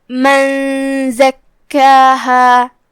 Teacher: پھر حرف الزائی ہے کلمت زکاہا میں، زائی حروف الاخفاء میں سے ہے، لہذا ہم نون کو بغیر ظاہر کیے ہوئے لیکن غنہ کے ساتھ یہ حکم کو ادا کریں گے